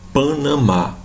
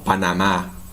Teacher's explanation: Então o A ele tem sempre esse som aberto